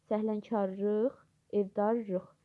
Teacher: Hər iki lıq şəkilçi rıq kimi tələffüz olunur.